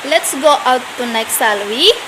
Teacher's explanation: penanya memberikan saran dengan intonasi yang naik, yaitu rising intonation